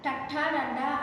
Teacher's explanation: నాలుక వెనక్కి తిరిగి పై భాగాన్ని తాకుతుంది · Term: మూర్ధన్యాలు